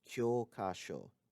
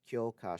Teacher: kyokasho textbook has a long o sound in the first syllable whereas kyoka license has a long o sound in the final syllable